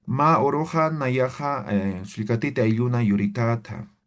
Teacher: simplemente estoy hablando, pero estoy expresando de forma llana, ¿sí? No hay entonaciones como en el español